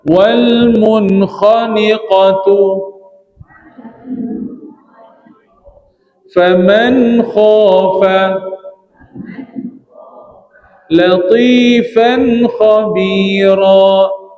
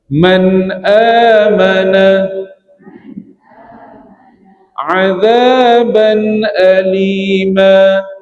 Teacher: Bunyi nun mati dia. Jelas saja nun mati, terus beralih kepada baris yang berikutnya, tanpa dipanjangkan, tanpa didengungkan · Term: izhar